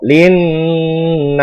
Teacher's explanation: cara membacanya harus berdengung dengan lama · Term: gunnah musyaddadah